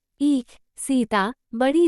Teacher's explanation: ये समृद्ध दीर्घ अग्र स्वर है। इसके उच्चारण में जिह्वा का पिछला भाग बहुत अधिक ऊपर उठता है और होंठ चौड़ाई में खुल जाते हैं।